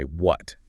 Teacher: It's a single, unsoftened syllable that usually carries a sharp, falling intonation. And in English, a falling intonation on a question sounds like a demand or a reprimand.